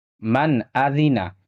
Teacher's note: یہاں نون ساکن ہے اور نون ساکن کے بعد یہاں حمزہ ہے، یہاں پہ نون ساکن کا اظہار ہوگا